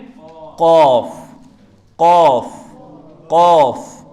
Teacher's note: کوے کے بالمقابل تالوں سے ادا ہوتا ہے